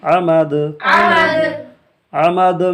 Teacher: عین زبر آ میم زبر ما دال دو زیر دن عمدن عمد عمد میں جو ہے آواز لوٹی ہوئی معلوم ہوئی، کیوں؟ اس لیے کہ دال حروف قلقلہ میں سے ہے